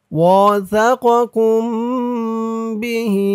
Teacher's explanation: মিম সাকিনে ইকফা, মিম সাকিনের পরে বা আসছে, তাই এখানে মিম সাকিনে ইকফা গুন্না হবে।